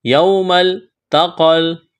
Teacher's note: یوم التقل، تا کو باریک، قاف کو موٹا، اس یا کو نہیں پڑھیں گے۔